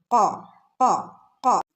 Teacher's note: നാവിന്റെ മുരട് ഭാഗം മുകളിലുള്ള അണ്ണാക്കിൽ ഇങ്ങനെ തട്ടെന്ന് ചേർന്ന് വരുമ്പോഴാണ് കോ എന്നുള്ള സൗണ്ട് വരുന്നത്